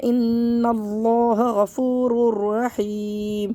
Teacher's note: را کو را سے ملائیں گے لیکن غنہ نہیں کریں گے ، تو پڑھیں گے غفور، غفور نہیں پڑھنا ہے، اس کو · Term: ادغام بلا غنہ